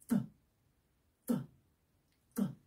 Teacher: your tongue is stiff. It's pressing against the teeth. And then you pull it and drop it. · It's a sound that we make by pushing our tongue towards the front of our mouth, and then the tongue will show just a little bit between your top teeth and your bottom teeth.